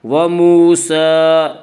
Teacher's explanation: سین کے اوپر کھڑا زبر ہے، کھڑا زبر کو 1 الف کے برابر کھینچ کر پڑھیں گے